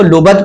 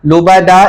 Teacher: اور اسی طرح ایک لفظ ہے لبدن، وقف میں بچے عموماً اس کو لبد پڑھتے ہیں، حالانکہ لبدن وقف میں لبدا، ایک الف کی مقدار پڑھیں گے کیونکہ 2 زبر کی تنوین اور آخر میں الف ہے، کھڑے زبر کی طرح کھینچ کر پڑھیں گے